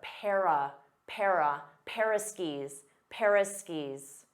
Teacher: instead of saying of you can reduce that to just simply a